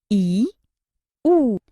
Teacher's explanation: संवृत्त स्वर: संवृत्त का अर्थ है कम खुला हुआ। जिन स्वरों के उच्चारण में मुख कम खुले उन्हें संवृत्त स्वर कहते हैं।